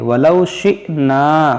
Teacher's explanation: حمزہ ساکنہ ہے، اس کو جھٹکا دے کر پڑھیں گے